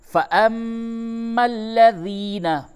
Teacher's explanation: میم مشدد ہے، غنہ ہوگا